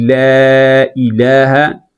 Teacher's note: اس لا میں جو الف ہے اس کو آپ نے باریک پڑھنا ہے، کیونکہ اس سے پہلے لام آ رہا ہے اور وہ لام جو ہے وہ باریک ہے، لاملین ہے۔